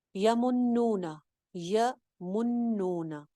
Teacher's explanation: یمنون، یمنون، یا سنگل حرکت، نون کے اوپر شد ہے، شد پہ کیا ہوتا ہے، ایک الف کے برابر غنہ کرتے ہیں. یمنون، نون کی زبر کو لمبا نہیں کرنا.